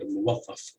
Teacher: So the stress would be on the third syllable.